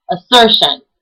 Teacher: instance it would be said assertion if you heard i put i put more of an accent on the sir part of the word